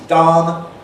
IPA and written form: dɑn (Don)